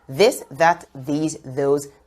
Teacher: for the voice th sound there'll be a vibration